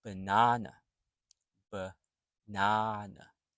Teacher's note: So the second A is the stressed A. The first and the third are schwa A, schwa sounds.